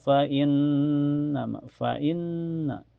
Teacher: ada gunah musyaddadah karena ada nun bertasdid. Cara bacanya ditahan sekitar dua ketukan saja. Sebabnya sebelum nun bertasdid ada huruf hidup yaitu harakat kasrah di.